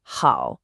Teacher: Down, then up. That is the shape your voice should make.